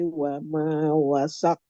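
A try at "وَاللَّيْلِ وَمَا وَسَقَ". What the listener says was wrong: Jangan tahan pantulannya. Wasaqo, langsung. Jangan wasaqo, tapi wasaqo.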